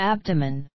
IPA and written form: 'æbdəmən (abdomen)